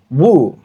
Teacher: ওয়াও পেশ হবে উ, কিছুটা বাংলা বুয়ের মতো, ঠোঁট দুটো একসাথে লাগবে না, না লাগিয়ে আমরা উ এর মতো করে বলবো উ